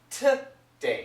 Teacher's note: she doesn't say today she says T day it's a t sound